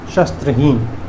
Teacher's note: एक बार फिर से रिपीट कर दो कि कैसे बोलते, उच्चारण कर दो। श नहीं, तालव्य श, स्त्र नहीं, दंत स और त्र का संयुक्त